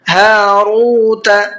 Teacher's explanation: ہا کو بھی کھینچنا ہے اور را کو بھی کھینچنا ہے، دونوں کو کھینچ کر کے پڑھنا ہے